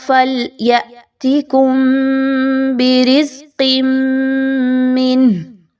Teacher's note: فَلْيَأْتِكُمْ میں آپ نے جھٹکا واضح کرنا ہے حمزہ ساکن کا، میم ساکن کے بعد با کا حرف آ رہا ہے تو یہاں پہ غنہ کرتے ہوئے پڑھیے۔